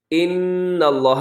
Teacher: نون مشدد پہ غنہ کیجیے گا